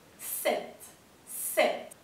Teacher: Esa E que está ahí es un poquito abierta.